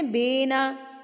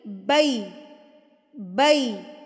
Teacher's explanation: ای, ای کی ساؤنڈ آئے گی اینڈ پہ, اے کی ساؤنڈ نہیں آئے گی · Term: یائے لین